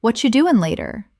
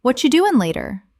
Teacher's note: the phrase, What are you doing later? might sound more like what you doing later in very fast casual speech.